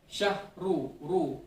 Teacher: ro-tafkhim artinya ro-nya dibaca tebal.